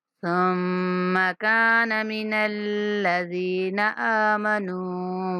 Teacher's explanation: کانا کاف کے بعد الف مدہ ہے، کاف کو کھینچنا ہے